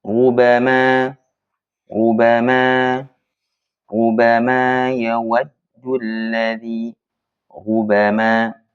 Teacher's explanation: Misalkan ayat rubama yawaddu alladhi rubama nah baik itu ra atau ru, patokan utamanya adalah kita rasakan sendiri ya, getaran ra itu berkurang di dalam mulut kita